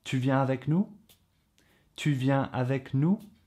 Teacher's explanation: you use a regular statement but your voice goes up at the end of it to indicate that you're turning it into a question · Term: question avec intonation montante